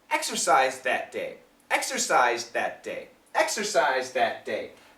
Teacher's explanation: the th is a little bit weak but you can hear it the reason it's a little bit weak is because this z sound is very strong